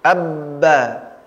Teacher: Abba, ya, di mana dia tertahan, kemudian terbuka. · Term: tasydidkan huruf